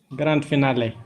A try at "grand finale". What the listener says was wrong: Yeah, here we have to pronounce D. But if anything that comes with grand, like grandfather, grandmother, grandchild, grandson, whatever, D is always silent. You thought that D is not pronouncing.